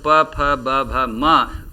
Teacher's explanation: प वर्ग का उच्चारण ओष्ठ से होता है